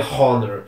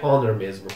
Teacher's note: também tem o h mudo não se pronuncia Honor se pronuncia Honor mesmo E se nós fossemos seguir a